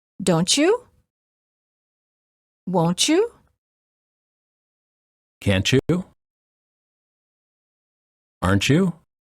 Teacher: Final T plus Y is usually pronounced as ch, as in church.